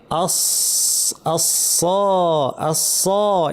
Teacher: জিহ্বার শীর্ষ নিচের পাটির দাঁতের গোড়ায় লাগিয়ে সিন এবং সদ, কিন্তু সদের আওয়াজটা ভারী, আওয়াজটা উপরে ঠেলতে হবে। আস, আমি চিন্তা করবো যে আওয়াজটা উপর দিকে ঠেলে দিচ্ছি জিহ্বা দিয়ে।